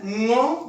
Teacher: ये ध्वनि है ङ, जो कंठ से बोली जाती है।